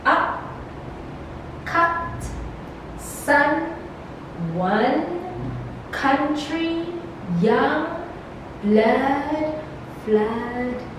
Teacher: the center of the tongue or a part slightly in advance of center is raised just above the fully open position · it's articulated with considerable separation of the jaws okay the jaws and the lips neutrally open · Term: the uh sound, uh sound